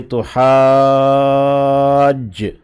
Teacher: ان کو مد مل جاتی ہے، تو اسی لیے تو حاج، اس میں جیم کے اوپر شد ہے تو اس سے جو پہلے الف ہے اس کو مد دے دی گئی ہے ، اور چونکہ یہ ایک ہی لفظ کے اندر ہے تو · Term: مد متصل